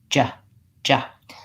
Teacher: And because I see that D there, when I say the J sound, my tongue starts in the position for the D. So my tongue should be behind my teeth, should be blocking the air, and then it comes out like J, J.